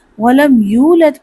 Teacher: ولم یو میں کیا ہے؟ یو واو ساکن سے پہلے پیش ہے، واو مدہ ہے، اس کو تھوڑا سا لمبا کر کے پڑھتے ہیں۔ ولم یولد پڑھنا ہے، ولم یولد نہیں پڑھنا، اسے جلدی ادا نہیں کرنا۔